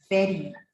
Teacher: so your upper teeth touches your lower lip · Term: labiodental sounds